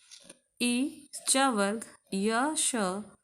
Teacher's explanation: ई च वर्ग, य श ये सब तालु से बोले जाते हैं